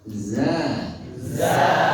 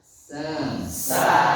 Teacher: Kalau za tidak ada desisnya, za itu bukan bas, bukan ribaz, baz.